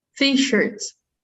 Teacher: So the stress is on T instead of shirts. Not t-shirts, but t-shirts.